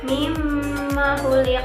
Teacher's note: Ada pantulan di huruf qaf yang terakhir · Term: qalqalah kubra